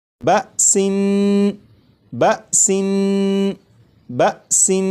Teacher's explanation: نون کو پڑھتے ہوئے زبان تالو سے لگا کر پڑھوں گا